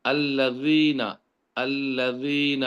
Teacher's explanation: ज़बान का अगला हिस्सा उसकी नोक जो है दांतों के अगले हिस्से से ऊपर से जाके लगेगी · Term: ज़ाल